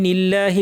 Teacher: লামটা পাতলা হবে কারণ আগে জের আছে